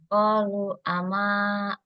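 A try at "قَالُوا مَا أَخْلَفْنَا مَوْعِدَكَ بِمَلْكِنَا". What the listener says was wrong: Qalu ma enggak ada a-nya.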